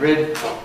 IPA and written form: rɪd (rid)